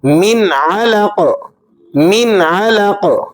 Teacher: جب قاف وقف کی وجہ سے ساکن ہوگا تو آپ یہاں پر قلقلہ بھی ادا کرنا ہے